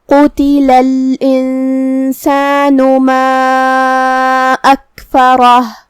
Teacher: کلمت قتل میں یہاں حرف القاف ہے. قاف کی ادائیگی زبان کے جڑ اور تالو کے نرم حصے سے ہے · قاف کی ادائیگی زبان کے جڑ اور تالو کے نرم حصے سے ہے. قاف حروف التفخیم میں سے بھی ہے تو ہمیں اسے بھاری آواز میں پڑھنا ہے